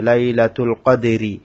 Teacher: এখানে এখানে ওয়াকফ করলে এখানে মোটা করে হবে না হয় এখানে র এর মধ্যে জের হওয়ার কারণে র বারিক হবে